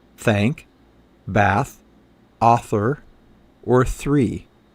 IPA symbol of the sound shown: θ